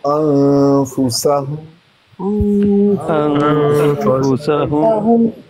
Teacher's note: یہاں پہ نون کو چھپا کے پڑھیں گے نا، اخفاء کا قاعدہ ہے. نون ساکن تنوین کے بعد اخفاء میں سے آ جائے تو انفسہم.